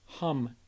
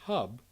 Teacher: you have to have nasal airflow in hum and oral airflow in hub